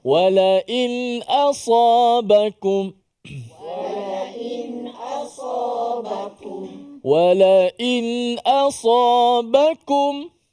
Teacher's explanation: Huruf hamzah ni huruf yang berada di jauh, pangkal halq, pangkal kerongkong kita. Namun bila kita menyebut huruf hamzah ini, pastikan dia keluar betul-betul hamzah yang kita beri, kita kata ada sifat yang tertahan dekat situ. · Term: izhar halki